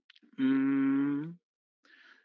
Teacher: En el caso del nasal, mmm, ok, bilabial, porque junté la M, los labios, para decir la M, pero nasal, porque ustedes pueden sentir cómo vibra la nariz